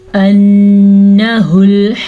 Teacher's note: नून पे गुन्ना है शद की वजह से